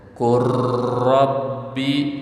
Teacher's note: lam jadi gak ada tanda masuk ke ro. Ro seolah-olah bertasydid.